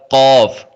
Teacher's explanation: اس کا مخرج ہے زبان کی جڑ اور تالو کے نرم حصے سے یہ ادا ہوتا ہے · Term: موٹا کاف